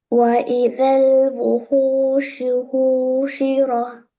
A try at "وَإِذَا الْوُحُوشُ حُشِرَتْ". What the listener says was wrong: ஹூஷிரா. அது எப்படி ஹூஷிரான்னு கடைசியில ஹாக்கு சுக்குன்னு வச்சீங்க? ஹூஷிரத். அப்ப இந்த ஹா விட்டுட்டோம் அப்படியா? இப்ப நீங்க ஹூ நீட்டல் அப்படியா? நீட்டாம ஆகுது. நீட்டாம எப்படி வரும்?